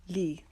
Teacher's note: لی لام کے نیچے زیر ہے، اس کو باریک کریں گے